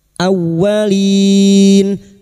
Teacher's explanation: masuk pada huruf wau yang bertasdid. Hanya masuk tanpa ditahan lama-lama tanpa mendengung. Awwalin lin bertemunya mad dengan huruf hidup yang dibaca waqaf.